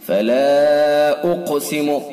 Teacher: فلا اقسم بالشفق، فلا الف حرف مدہ ہے اور حرف مدہ کے بعد حمزہ دوسرے لفظ میں، لہذا مد منفصل ہوگا. فلا اقسم، قاف حروف مستعلیہ میں سے پر پڑھا جائے گا اور قاف ساکن ہے تو حروف قلقلہ میں سے بھی ہے تو لہذا قلقلہ بھی ہوگا